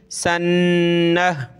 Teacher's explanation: تا، یتا سین نون زبر سن، نون ہا زبر نہ، سنہ، نون پہ غنہ کریں گے تشدید کی وجہ سے